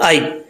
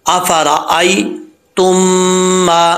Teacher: या लीन का मतलब है या को लंबा नहीं करेंगे, इसको बग़ैर लंबा किए जो है पढ़ेंगे